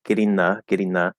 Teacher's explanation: we can modify the n to be dental in getting